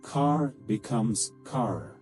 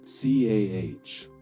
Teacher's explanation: But British people barely touch the R. So, car becomes CAH.